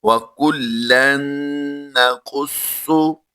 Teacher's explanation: نون مشدد ہونے کی وجہ سے ہم نے اس کو غنہ کر کے پڑھا ہے، تو اس کی ادائیگی یہ بنے گی وَكُلًّا نَقُصُّ۔ صاد اور قاف دونوں کو ہم نے پر کر کے پڑھنا ہے